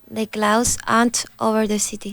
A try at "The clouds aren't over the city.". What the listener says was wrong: Pronounce the D in clouds.